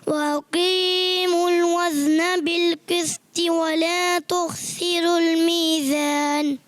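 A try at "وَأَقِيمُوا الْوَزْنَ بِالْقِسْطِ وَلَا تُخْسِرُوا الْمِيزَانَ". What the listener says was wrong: جی زا سین صاد اس کی ادائیگی اور تھوڑی پریکٹس کرنی ہے، اچھے انداز سے پڑھنا ہے.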